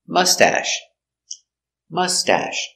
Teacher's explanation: put the accent on a first syllable